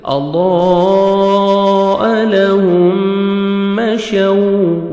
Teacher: واو لین ہے، لپس کو راؤنڈ میں لے کے جائیں گے تاکہ واو اچھی طرح ادا ہو